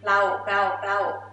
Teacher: you heard me pronounce R sound really clear, right? But in real life, R gonna disappear. Just say rao, rao, rao, like this.